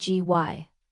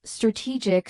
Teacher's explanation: Strategy stresses the beginning, while strategic stresses the middle